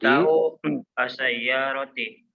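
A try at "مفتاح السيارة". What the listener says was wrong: ya, miftahus sayyarati. Disambung bacanya ya. Disambung.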